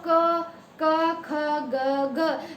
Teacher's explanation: तो कंठ से हमारी आवाज आ रही है